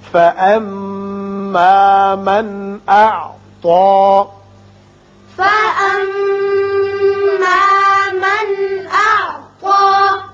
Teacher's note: یہاں نون ساکن کے بعد حمزہ بشکل الف ہے، اظہار حلقی ہوگا